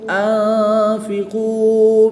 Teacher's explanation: نون ساکن کے بعد فا حروف اخفا میں سے ہے تو یہاں پر غنہ زمانی کر کے پڑھیں گے